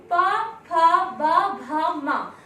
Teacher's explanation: इन वर्णों का उच्चारण स्थान है ओष्ठ, क्योंकि जब हम प, फ, ब, भ, म अर्थात जब ये वर्णों का उच्चारण करते हैं तो हमारे जो होठ हैं आपस में मिलते हैं, और ओठ का मिलना ही इनका उच्चारण स्थान तभी होता है।